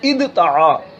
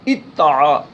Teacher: دال اور تا یہ دونوں ایک ہی مخرج سے ادا ہوتے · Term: ہم مخرج